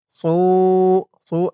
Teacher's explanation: সু সু এক আলিফ টান পেশের পরে ওয়াও সাকিন।